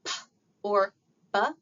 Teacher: sounds that are made by pulling the two lips together like P or B, those are called bilabial sounds. That the place of articulation is bilabial, meaning both lips.